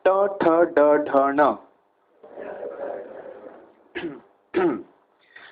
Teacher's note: Now your tongue will come behind the teeth and hit it from back and make sound.